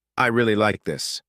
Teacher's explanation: I really like this with stress on really, it shows excitement · If you say, "I really like this." with stress on like, it sounds more sincere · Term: word stress